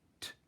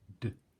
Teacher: T is unvoiced, d is voiced, using exactly the same technique at the front of my mouth.